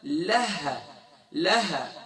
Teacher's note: ہا کا مخرج ہم نے بتلایا تھا اقصی حلق، یعنی سینے کی جانب والا، یعنی باٹم آف تھروٹ، یہاں سے ہا ادا ہوگا.